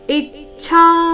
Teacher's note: ಛಾ ಮಹಾಪ್ರಾಣ ದೀರ್ಘ ಹೇಳಿದ ನಂತರ ಅದರ ಮೇಲೆ ಸಹ ಆಘಾತ ಬರಬೇಕು